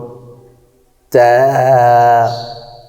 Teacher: তা হরফটি জিহ্বার আগা সামনের উপরের 2 দাঁতের গোড়ার সঙ্গে লাগাইয়া উচ্চারণ করতে হয়।